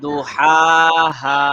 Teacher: প্রথম হাটা গলার মাঝে